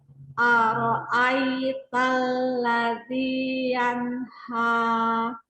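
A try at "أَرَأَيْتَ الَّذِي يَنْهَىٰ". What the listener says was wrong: Nah, itu semua keangkat. Ara'aital ladzi yanha. Jangan Nah, ketika kita mengucapkan fathah, maka jaga pangkalnya supaya tidak naik. Ara'aital ladzi yanha.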